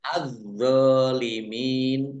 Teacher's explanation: alif lam syamsiah karena tidak dibaca langsung masuk ke huruf berikutnya yaitu do ditandai dnya ada tasdidnya dnya dibaca dobel ya dnya